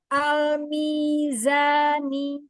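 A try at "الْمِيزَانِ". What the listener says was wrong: Tahan lagi lam sukunnya. Jadi diselesaikan lam sukunnya ya.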